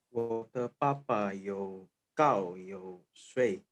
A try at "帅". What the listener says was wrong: 帅. Bukan shui tapi shuai.